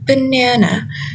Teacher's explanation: The stress falls on the second syllable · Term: stress placement